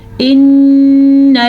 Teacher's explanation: نون کے اوپر شد ہے، اس شد کی وجہ سے نون پہ غنہ کیا جائے گا